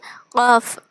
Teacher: அதில் இப்போ காஃப். இந்த காஃப் எங்கேருந்து பிறக்குதுன்னா நாவோடைய கடைசியிலேருந்து, நாக்கோடைய கடைசி, அதாவது நாக்குல கடைசியிலேருந்து காஃப் அப்படின்னு ஓதணும்.